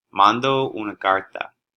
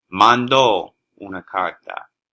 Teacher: you can see that the O is stressed when you need to conjugate the verb